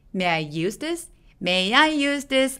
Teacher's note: 이 문장에서는 use가 제일 중요한 키워드니까 use에 강세 줘서